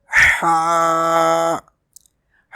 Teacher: Ha is pronounced from the middle part of the throat.